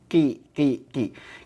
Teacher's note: Kalau qaf itu pangkal lidah nempel ke langit-langit yang lunak.